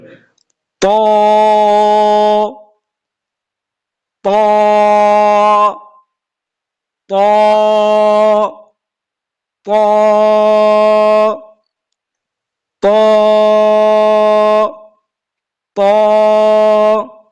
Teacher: এরপরে আসেন এই যে ত, এই যে ত হরফটা, এই যে ত, এই ত হরফটা উচ্চারণ করতে গেলে অনেক সময় আমরা মুখ দিয়ে বাতাস বাহির করি, এই হরফটা উচ্চারণ করতে গেলে বাতাস বাহির হবে না